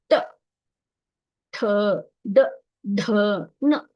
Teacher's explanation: ಈ ಮೂರ್ಧನ್ಯ ಇದೆಯಲ್ಲ ಅಂಗುಳದ ಅಂತ್ಯ ಭಾಗಕ್ಕೆ ಅಂತಂದ್ರೆ ಮುಂದಿನ ಭಾಗಕ್ಕೆ ಹೋಗಿ ತಗಲುತ್ತೆ ಟ ಅಂದ್ರೆ ಅದು ರೋಲ್ ಆಗುತ್ತೆ ನಮ್ಮ ನಾಲಿಗೆ ರೋಲ್ ಆಗಿ ನಾವು ಹೇಳ್ತೇವೆ